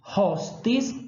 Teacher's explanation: O T, em latim, tem sempre o valor de uma oclusiva dental surda.